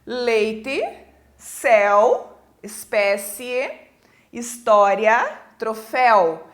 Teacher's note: de vogal + semivogal ou semivogal + vogal na mesma sílaba quando se tratar de um ditongo oral esse ar sai totalmente pela boca